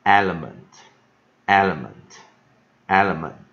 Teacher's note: 一个▁full▁vowels▁在这边啊，在前面第一个音节啊，后面两个就是▁weak▁vowels